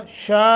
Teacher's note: शा मद्द मुत्तसिल है लंबा करेंगे।